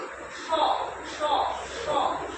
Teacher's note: তালুতে জিভটা থেকে যে উচ্চারণ হয় সেটাকে আমরা বলি তালব্য স · তাহলে জিভটা আমরা যখন তালব্য স উচ্চারণ করবো তখন জিভটা কিরকম হবে? ওপর দিকে উঠবে। স স স, দেখো তোমরা ঘুরে গিয়ে ওপর দিকে উঠছে।